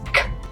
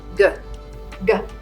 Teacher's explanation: Your mouth should stay in the same position, and you should not feel your neck vibrate on K, but you should feel it vibrate on G.